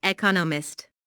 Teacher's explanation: with the stress on the second syllable